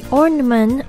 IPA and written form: ˈɔrnəmənt (ornament)